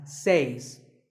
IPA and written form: s eɪs (says)